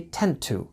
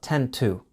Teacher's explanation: the to sound becomes more of a quick d sound